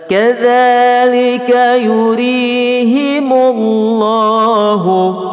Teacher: Kadzalika yuriya mati mat asli panjangnya 2 harakah. Lafaz Allah dibaca tebal. Kenapa tebal? Karena di belakangnya berbaris di hadapan.